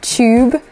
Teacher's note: when we have the Y sound, or like the T-Y-U sound, we often squish it together and make a ch sound